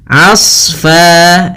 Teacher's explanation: Asfa, di sini huruf a ketemu dengan huruf shad yang tebal. Hati-hati jangan menebalkan ainnya, tapi di sini ditebalkan adalah huruf shadnya. Hati-hati juga jangan sampai terpantulkan huruf shadnya.